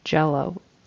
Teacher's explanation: the J sound, your tongue actually pushes off against the top of your mouth. With Y, it doesn't.